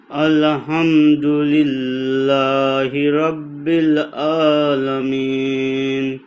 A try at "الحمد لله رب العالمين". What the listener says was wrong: দেখেন, আলহাম, আলো হামদু, এরকম না। আলহামদু লিল্লাহি রব্বিল আলামিন।